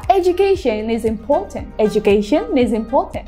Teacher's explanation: Kata education diakhiri dengan suara n dan diikuti dengan suara i. Jadi n itu bisa langsung digabung dengan i-nya. So mereka terdengar connected atau menyambung, yaitu education is. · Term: catenation